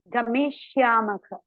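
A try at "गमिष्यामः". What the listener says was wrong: Gamishyamaha iti sadhu.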